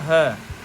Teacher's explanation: ह को सघोष महाप्राण काकल्य व्यंजन बोलते हैं